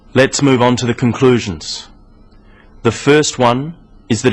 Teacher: Pauses should come between sentences, here. But you'll notice small pauses in the middle of sentences, after phrases.